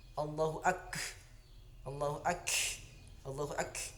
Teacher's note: Ini kaf di sini sifatnya hams, jadi ada angin sedikit di situ. Jadi teman-teman jangan berlebihan menyebutkan hams, tidak boleh.